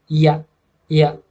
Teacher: Semivokal yaitu ketika kita menyebutkan huruf ya seperti menyebutkan huruf vokal. Kita pertama menyebutnya i dulu, kemudian a